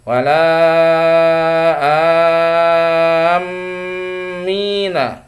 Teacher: mim tasydid atau mim Nun yang bertasydid ya agak ditahan bacanya dengung